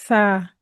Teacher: इस हर्फ के अंदर जर्रा बराबर भी सीटी की आवाज नहीं आनी चाहिए। जैसे कि सा अगर इसको सा पढ़ दिया हमने तो यह जो है यह सीन के जैसा हो जाएगा।